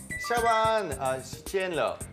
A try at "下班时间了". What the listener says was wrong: 성조를 조금 더 우리가 좀 했으면 좋겠는 게 下班时间了.